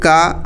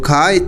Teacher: क अल्पप्राण है और ख महाप्राण है